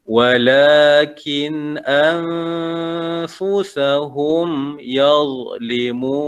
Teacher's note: kin tu nun mati bertemu alif izhar. Baca dengan terang jelas tanpa dengung.